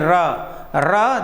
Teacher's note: पूरी तरह से कांपती है जीवा इसलिए प्रकंपित · बोलकर देखेंगे र देखो हिल रही, पूरी तरह से कांपती है जिह्वा, इसलिए प्रकंपित। और वह बेटा लुंठित, थोड़ा सा उस राउंड में आती, घूमती है जिह्वा ऐसे, इसलिए इसे लुंठित भी कहते हैं। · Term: प्रकंपित व्यंजन